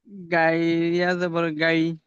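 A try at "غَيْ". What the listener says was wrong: গইন, গইন গাই হবে না, গইন থেকে গ হবে। গইন ইয়া জাবার গই। দেখেন আপনি এমন ভাবে মানে মুখস্থ করে ফেলেছেন আর পরিবর্তনও করছেন না। গাইন ফের বলছেন, আপনাকে একবার বলে দেওয়া হলো গইন ইয়া জাবার গই, গাই হবে না, গইন হবে। আর গাইন বলছেন আপনি।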